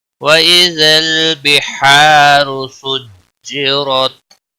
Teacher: را زبر پیش کی وجہ سے پر پڑھا جائے گا، سجرت، را زبر کی وجہ سے پر پڑھا جائے گا ، وقف کی صورت میں تا ساکن ہی پڑھا جائے گا،